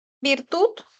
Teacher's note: la I es anterior alta